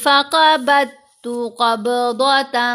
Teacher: یہاں پر قاف کو موٹا پڑا، حروف مستعلیہ میں سے ہے، ضاد کو موٹا پڑا جائے گا، یہ بھی حروف مستعلیہ۔